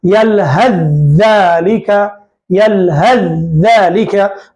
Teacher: सा को हम नहीं पढ़ रहे हैं, हा को डायरेक्ट जाल से मिला रहे हैं। यलहज़्ज़ालिका, यलहज़्ज़ालिका, लिखने में तो सा लिखेंगे लेकिन पढ़ेंगे जाल, सा को नहीं पढ़ेंगे। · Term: इदगाम